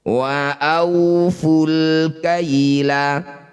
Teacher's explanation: alif diikuti lam sukun disebut bacaan namanya izhar qamariyah. Cara bacanya lam sukun baca dengan jelas.